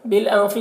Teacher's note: नून की आवाज़ को नाक में छुपा कर पढ़ेंगे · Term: इख्फा